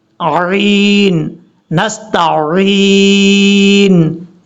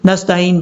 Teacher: تا کے بعد عین ہے، جو کہ کئی لوگ غلطی کر جاتے ہیں، عین کو حمزہ پڑھ جاتے ہیں